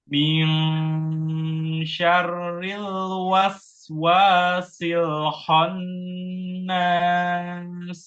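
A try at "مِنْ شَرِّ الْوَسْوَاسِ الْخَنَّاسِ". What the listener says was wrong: ya, lamnya tipiskan lagi di lam yang kho ya. Mil, tipiskan mil. Dan secara umum untuk tadi ya, yang lamnya sudah lumayan juga tidak mantul. Hanya saja dari segi tebal tipisnya. Lam itu sifat aslinya tipis, istifal.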